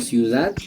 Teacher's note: también podemos notar un apócope de la oclusiva dental sonora en palabras como ciudad, pronunciándolas como ciudad.